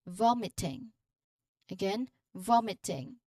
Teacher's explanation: the initial syllable here vom that's where you emphasize the sound of the word